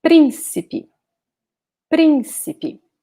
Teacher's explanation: here principe principi notice that we have an accent here so we should pronounce this first syllable as the strongest one